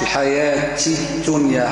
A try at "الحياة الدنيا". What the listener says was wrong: الحياة هكا تافهة شوية همس، الحياة الدنيا دال ما فيها شمس، الدنيا دودادي صافية، مش تنيا تنيا لا الدنيا،